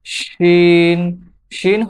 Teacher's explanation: শিন হরফটি জিহ্বার মধ্যখান তার বরাবর উপরের তালুর সঙ্গে লাগিয়ে উচ্চারিত হয়।